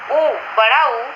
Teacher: ऊ, बड़ा ऊ, यह दीर्घ है और पश्चिम वृत्ताकार कहलाता है। इसके उच्चारण में ओष्ठ काफी बंद तथा गोल हो जाते हैं।